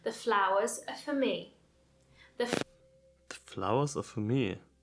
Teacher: Now, I'm not stressing every single syllable there. I'm stressing flow, me. Flow, me. So the word for, which isn't stressed, is being reduced to the sound f.